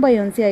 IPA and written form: biːˈjɒnseɪ (Beyoncé)